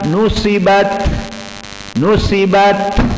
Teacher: Ta di saat disukunkan dan di akhir kalimah, maka dia hukumnya syiddatul hams, dalam keadaan hams. Maka dibaca nusibat, nusibat, harus ada seperti itu. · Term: sifatul hams